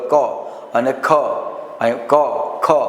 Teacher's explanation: ક ખ એટલે અહીંયા વધારે વાયુ બહાર નીકળતો હોય છે, એ મહાપ્રાણ છે